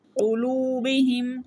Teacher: فی قلوبہم، فی یا مدہ ہے 1 سیکنڈ کے لیے لمبا کریں گے۔ قلوبہم، قاف کو موٹا پڑھیں گے